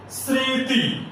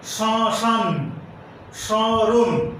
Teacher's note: শব্দের আদিতে যদি মফলা থাকে তাহলে সেই ময়ের উচ্চারণ হবে না, তবে আনুনাসিক হবে। যেমন স্মৃতি একটি শব্দ, এই শব্দের শুরুতে মফলা আছে কিন্তু ময়ের উচ্চারণ হবে না, আনুনাসিক হবে।